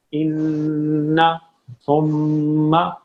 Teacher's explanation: تشدید والا تو یہ ہے کہ جب بھی نون پہ تشدید آ جائے، جب بھی میم پہ تشدید آ جائے، غنہ لازم ہوگا